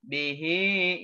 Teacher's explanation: hi-nya mad silah qasirah, dibacanya 2 harokat sama, ya. Haknya hak dhamir atau hak kinayah, hak dhamir, ya.